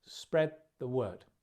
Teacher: Stress on the word at the end.